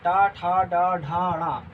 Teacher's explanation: टवर्ग टा ठा डा ढाणा और रा और शा, इनका उच्चारण स्थान क्या है, मूर्धा। मूर्धा शायद इस भाग को कहते हैं, ये मूर्धा है, तो इससे उच्चारण स्थान होता है।